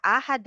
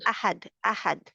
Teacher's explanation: आ को नहीं खींचना, इसको खींचना नहीं है, लंबा नहीं करना, आहद नहीं है, अहद अहद, अहद।